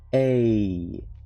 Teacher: When you say a, that's actually two vowels. You're going from here to here.